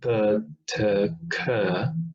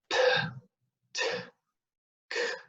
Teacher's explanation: So instead of saying p, t, k, we say p, t, k, with a lot of force coming out from our lungs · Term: aspirated